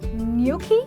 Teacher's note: the G is silent and there is an invisible y in the pronunciation